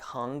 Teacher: better hung imagine h-u-n-g and then you hang on that angie the tongue is lifting in the rear of the mouth and it is in fact closing off airflow to your mouth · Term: ng noise